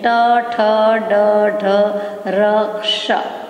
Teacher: ઉપલા દાંત અને તાળવું એ બે વચ્ચેના જે ભાગ છે ત્યાંથી જે શબ્દ અક્ષર ઉચ્ચાર થાય છે તેનું નામ મૂર્ધ સ્થાનેથી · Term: મૂર્ધન્ય